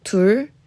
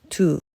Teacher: For the number 2, 둘, we drop the R sound, making it 두.